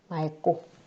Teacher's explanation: 왜냐하면 이 막이라는 어간 뒤에 자음 기역으로 시작하는 게 뒤에 바로 오기 때문에 뒤에 기역이 온다면 리을 기역을 리을로 맑고 라고 발음해야 됩니다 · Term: 자음군 단순화